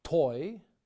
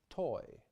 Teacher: To form the Russian T, more time and intensity is required, and more of the tongue comes into contact with the upper teeth.